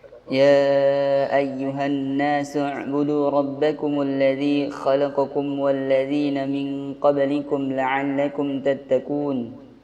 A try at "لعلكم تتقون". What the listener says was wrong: Qafnya antum kurang. La tattaqu bukan ka. Tattaqun.